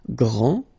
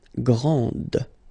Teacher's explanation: This final D is not pronounced.